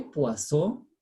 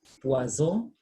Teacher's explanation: So we say poisson because double S, the S sound is retained, but now poison, it is single S between vowels, so the sound becomes what? Z.